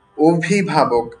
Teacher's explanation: আমি শব্দটির উচ্চারণ করেছি অভিভাবক, আমি কিন্তু অভিভাবক বলিনি। শুরুর যে অটা আছে এটাকে আমি ও এর মতো করে বললাম